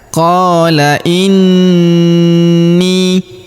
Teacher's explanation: Huruf qo kita panjangkan dua harakat karena terdapat alif di depannya. Qola inni. Huruf ni kita tahan dan kita tekan karena terdapat tanda tasdid di atasnya serta kita dengungkan ya dua sampai 3 harakat.